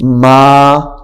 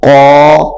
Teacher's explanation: یہاں پہ الف باریک ہو گیا، یہاں پہ الف موٹا ہو گیا ہے